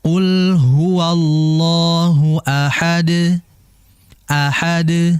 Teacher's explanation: Sifatnya dia kan adalah qalqalah, maka dipantulkan qul huwallahu ahad, ahad, dan langsung dipantulkan, jangan sampai ditahan.